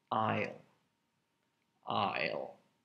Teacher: there is an S in that word, but you don't pronounce it at all. Aisle. Aisle. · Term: silent S